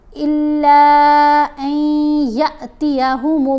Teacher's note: یا کو لمبا کر کے نہیں پڑھنا، یا کو جھٹکا دے کر پڑھیں گے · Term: حمزہ